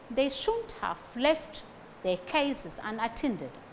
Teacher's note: Unattended, stress falls on tended.